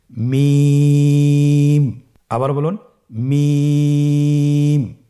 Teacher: মিম হরফটি উচ্চারণের ক্ষেত্রে অবশ্যই বারিক হবে, পাতলা হবে এবং তিন আলিফ টেনে উচ্চারণ করতে হবে। · মিম হরফটির উচ্চারণ স্থান দুই ঠোটের শুকন স্থান থেকে উচ্চারিত হয়